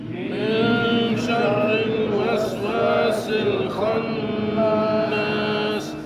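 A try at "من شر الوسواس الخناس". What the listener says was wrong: Masih ada syarri. Awas, Pak. Syarri tipis. Syarri. Betul-betul tipis. Jadi enggak ada syarri. Min syarril waswasil khannas.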